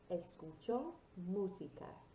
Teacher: it's got that short, sharp O sound at the end